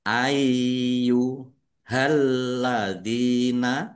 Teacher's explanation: Ya-nya ada tasdidnya ya. Dibaca dobel · Dibaca panjang boleh 5, boleh 2 harokat. Yaknya ada tasdidnya, ya dibaca double. Dibaca ai dulu.